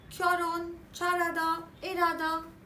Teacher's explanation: When a syllable ends with l and is followed by a syllable that begins with h, the h is actually dropped.